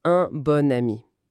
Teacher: Sauf, bien sûr, attention quand il y a une liaison avec une voyelle qui suit. Là, on entend le ne.